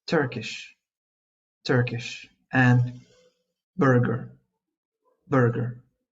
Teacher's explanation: Make sure not to add the extra u sound.